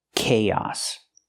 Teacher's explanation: Use the k k sound like cake plus the long A, kay, and then the ah sound like hot and stop, chaos. We link the two vowels with the ee sound like yes and yesterday. Together, chaos. · We link the 2 vowels with the y sound like yes and yesterday.